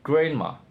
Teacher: the stop d is omitted as surrounding nasal sounds influence articulation. The simplification reflects ease of production, especially in excited or rapid speech.